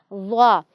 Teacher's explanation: بہت نرمی سے ادا کریں گے تو یہ زا نہیں بلکہ زال ہو جائے گا۔ ضا، ضا کی آواز نرم، موٹی اور سیٹی کے بغیر ہوتی ہے